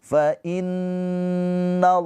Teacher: Nun yang bertasydid ghunah musyaddadah ditahan dua harakat. · Lafaz Allah pakai O ya, dia dibaca tafkhim tebal karena sebelum lafaz Allahnya harakatnya baris atas ya. Fathah Allah dibaca panjang dua harakat ini pemanjangnya.